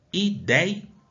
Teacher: Aonde que está a sílaba mais forte? No DEI. Eu não falo ideia, eu falo ideia.